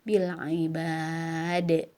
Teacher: di akhir ada da yang disukunkan, hukumnya qalqalah harus dipantulkan.